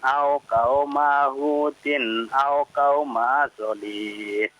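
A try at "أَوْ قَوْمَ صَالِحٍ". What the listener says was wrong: Terbalik. Soknya yang panjang, ya. Au qauma salih, bukan solih, bukan, ya. Coba ulang lagi. Salih. Kalau berhenti, salih.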